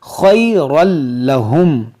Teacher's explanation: را کو بھی موٹا کریں گے کیونکہ را پہ دو زبر ہے